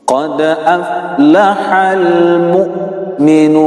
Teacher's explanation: Huruf hamzah sukun, maka haknya harus bersifat syiddah, tertahan.